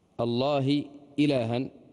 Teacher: الهمزة والهاء معلوم أنهما من نفس المخرج فكان عليك أن تخلص أحدهما من الآخر ولا يعني تتكئ على